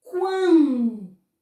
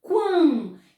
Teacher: sai pelo nariz parcialmente o meu sonzinho, quando. Então, esse A é um A nasal.